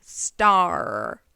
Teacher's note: We have vocalic R that is intertwined with the vowel.